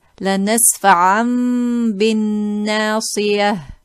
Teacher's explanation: we change the noon into a hidden meme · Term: iqlab